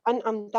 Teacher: نون کی آواز کا ناک کے بانسے میں جانا آٹومیٹک ہے